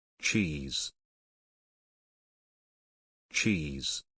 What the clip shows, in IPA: tʃiːz